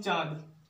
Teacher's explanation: इसका उच्चारण जो है नाक और मुंह दोनों से होता है। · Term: अनुनासिक